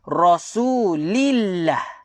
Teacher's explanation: sebelum kalimah Allah adalah huruf yang berbaris bawah. Huruf yang berbaris bawah, maka kalimah Allah kita baca secara nipis. Contohnya Rasulillah. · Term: lam lafzul jalalah